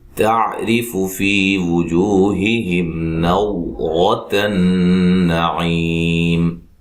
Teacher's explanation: تا کو باریک پڑھنا ہے، را کو باریک پڑھنا، را کے نیچے زیر ہے